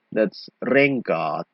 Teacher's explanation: the ng sound strengthens to nk, so it's a reverse gradation.